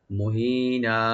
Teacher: মুহিনা, হাটাকে অবশ্যই রাইট দিবেন গলার শেষ থেকে। আর নুন উপর যে দুই জবর আছে, এখানে আমরা যখন আমরা ওয়াকফ করব, এখানে আমরা এক আলিফ পরিমাণ টেনে ছেড়ে দেব। এটা মাদ্দে আওয়াজ নামে পরিচিত।